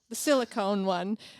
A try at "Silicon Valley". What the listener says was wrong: Silicon Valley. Valley. This is not what we put in people's breasts, which is silicone. This is silicon. A metal that makes up microchips.